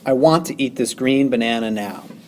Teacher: There are 5 sets of iambs in this line. The first is I want. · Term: iambic pentameter